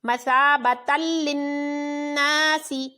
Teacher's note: اس میں ادغام بلا غنہ ہوا کیونکہ 2 زبر کے بعد لام حروف یرملون میں سے ہے جس میں غنہ کے بغیر ادغام ہوگا۔